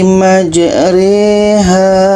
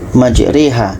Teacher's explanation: yang asalnya majroha dibaca menjadi majreha ini namanya bacaan imalah